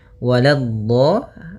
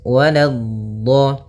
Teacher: la-nya jangan sampai tebal, jangan waladdo, tapi la-nya tipis